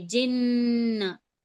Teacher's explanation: ये तशदीद है तो हम नून को 2 बार तो पढ़ेंगे। जीम पहले वाले हुर्फ से मिलाकर पढ़ेंगे और उसके ऊपर खुद के ऊपर जबर लगा है ना।